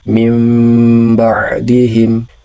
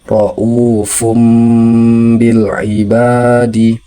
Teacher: Kemudian huruf ba, apabila nun mati ataupun tanwin bertemu dengan huruf ba, maka hukum bacanya adalah iqlab, sehingga nun mati atau tanwinnya dibaca berubah menjadi mim dan disertai dengung